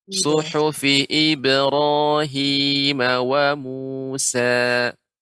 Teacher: qalqalah pada huruf ba tadi terdengar suhufi ib ya, yang benar hanya memantul saja ib.